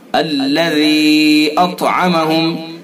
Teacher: ذال کو نرمی کے ساتھ پڑھیں گے اور ذال کو کھینچیں گے، یا حرف مدہ ہے، اس کے بعد حمزہ ہے دوسرے لفظ میں، تو اس کے اندر مد منفصل ہوگا۔